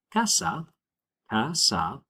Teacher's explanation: the stress on that word always falls on the second to last syllable